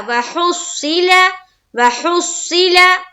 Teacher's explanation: स्वाद को मुंह भर कर बोलेंगे और हा को स्वाद से मिला रहे और स्वाद को फिर जेर की हरकत के साथ पढ़ेंगे।